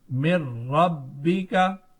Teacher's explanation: ادغام بلا گننا, یعنی ادغام بغیر گننے والا. یہاں ادغام تو ہوگا لیکن گننا نہیں کریں گے